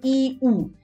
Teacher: এই ধ্বনি উচ্চারণের সময় জিভ সবচেয়ে উপরে উঠে থাকে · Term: উচ্চ স্বরধ্বনি